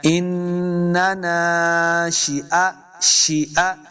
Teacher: شین کو تلفظ کے ساتھ پڑھنا ہے، سیٹی کی آواز آئے گی، حمزہ کے اوپر زبر ہے، اس کو لمبا نہیں کریں گے۔